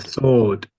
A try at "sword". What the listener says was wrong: You pretty much had it, but I wonder why you kept missing the D off. Sword, sword. Yeah, definitely quite a strong D on the end there.